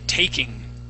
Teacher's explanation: instead of having an aw sound, that word is, it has a long A